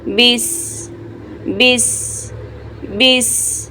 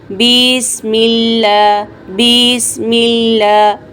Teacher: با کو سین کے ساتھ فوراً ملا دیں گے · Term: ساکن حرف